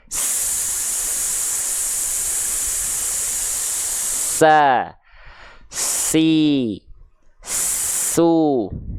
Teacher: Jadi huruf sin itu punya sifat yang namanya adalah sofir. Apa itu sofir? Sofir itu artinya adalah berdesis.